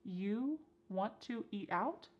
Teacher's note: And then we have reduced want to to become wanna